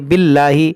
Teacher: جلالت سے پہلے زیر ہے تو اس کو ہم باریک پڑھیں گے